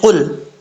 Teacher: قاف حروف مستعلیہ میں سے ہے، پر پڑھا جائے گا، دو نقطوں والا قاف، اس کا مخرج ہے زبان کی جڑ اوپر والے تالو کے نرم حصے سے لگے تو قاف پڑھا جاتا ہے۔